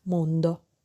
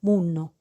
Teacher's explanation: the consonant cluster nd in Italian corresponds to nn in Neapolitan